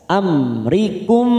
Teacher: mim sukun lagi bertemu ro Idhar syafawi kita baca jelas